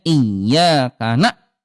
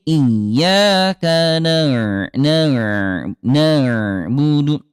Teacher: Jadi huruf ain kalau sukun jangan dihentakkan ya